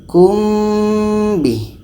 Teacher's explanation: Ketika kita sebut huruf mim, kita sudah merasakan huruf ba. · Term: ikhfa syafawi